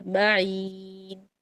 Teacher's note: جو معین کا میم ہے نا شدہ والا، اس کو آپ نے کامل غنہ پڑھنا ہے، معین. اور معین کو چھوٹا نہیں پڑھنا چاہیے.